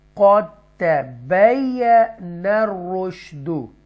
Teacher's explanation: काफ हरकत वाले काफ को ता मुशद्दा के साथ मिलाएंगे और इस दाल को स्किप कर देंगे